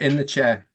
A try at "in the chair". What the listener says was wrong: In the chair. It's not in the chair, okay? It's in the chair, okay? There's no R, okay?